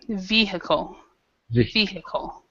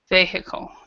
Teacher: The stress is actually with the VE.